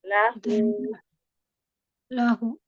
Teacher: Iya, tapi pastikan huruf sebelum itu memang hurufnya juga hidup juga berharakat dan itu wnya cuma wau kecil. Jadi cuma dibaca dua ketukan kan dua harakat. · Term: mad silah sugra